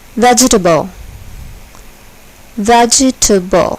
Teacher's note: the first syllable is accented